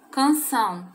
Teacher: sílaba tônica são ela é uma palavra oxítona